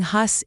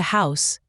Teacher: Words that already had that high “u” became diphthongs, morphing hus into house